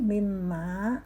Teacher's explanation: Mimma, mimnya bertasdid maka mendengung